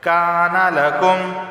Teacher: کاف علی زبر کا 1 الف کے برابر اسے کھینچ کر پڑھا جائے گا۔